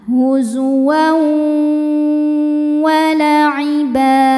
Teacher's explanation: Kemudian ada hukum idgham bi gunnah karena ada tanwin fathah menghadapi huruf waw, maka tanwinnya dileburkan ke waw disertai dengan dengungan